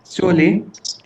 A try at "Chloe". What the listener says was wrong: Chloe. Chloe. Chloe. Not cha. It's Chloe. Say it. Chloe. Pronounce it like a K. Chloe. Chloe. Like we say club. Same way, Chloe.